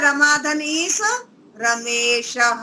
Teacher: आ और ई मिलकर ए हो जाता है